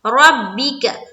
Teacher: را کو پر رکھنا ہے، با سے ملائیں گے